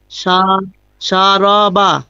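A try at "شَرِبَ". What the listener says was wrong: র টানবে না তো? সা, সা টানুন আগে। রবা, শারবা, শারবা। শারবা।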